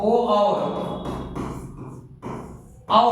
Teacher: कंठ और ओष्ठ दोनों से जिनका उच्चारण होता है वो ओ और औ हो गए